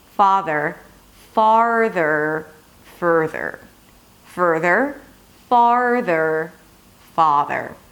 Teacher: Fa, and then you bring the tongue up for the R, because you don't want to skip the R